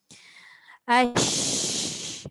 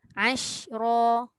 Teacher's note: Sama bunyi dia. Cumanya dia punya kedudukan untuk meletakkan makhraj huruf shin tu yang setepatnya lidah tengah saja berfungsi, dia bukannya bibir. Sebab shin memang bukan huruf bibir.